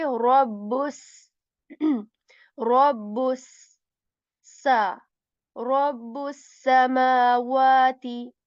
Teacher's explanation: In sa we are going to like produce a whistle sound in it